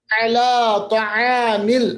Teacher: عین کو مشق کیجیے گا وسط حلق سے آ رہا ہے